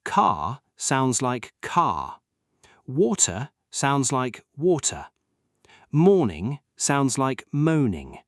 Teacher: The second feature is the letter R. In many British accents, especially Received Pronunciation, which is the classic clear British accent, the R at the end of a word is often silent.